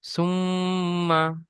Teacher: মিমের উপরে তাজদিদ আছে, তাজদিদ ওলা অক্ষরকে দুবার পড়তে হয়, একবার ডান দিকের অক্ষরের সাথে মিলিয়ে আর একবার নিজে নিজে। আর তাজদিদ মিমের উপরে হওয়ার কারণে এক আলিফ পরিমাণ গুণনা করে পড়তে হবে